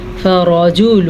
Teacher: فا زبر فا را زبر را، را کو پر پڑھنا ہے